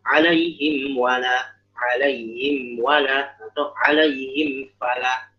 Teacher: Ya alaihim wala atau alaihim fala. Mimnya jelas, wa-nya jelas, fa-nya jelas. Nah, mim, waw, fa. Ini mereka berada di satu makhraj, itu di syafatain. Di dua bibir. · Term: izhar syafawi